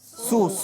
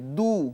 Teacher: সোয়াদ মোটা হবে দাল পাতলা হবে